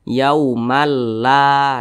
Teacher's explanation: maka tanwin berjumpa dengan huruf lam hukumnya idgham bila ghunah ahah cara membacanya itu dimasukkan kemudian juga dia tidak berdengung